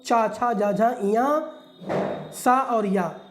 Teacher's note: ये आपके तालु से बोले जाते हैं। इसलिए इसको बोलते हैं तालव्य व्यंजन।